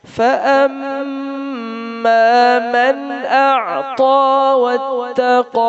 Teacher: اور اعطا میں عین کو نکالنا ہے from middle of throat، حلق کے درمیان سے، وسط حلق سے، اور تا کو موٹا کرنا ہے.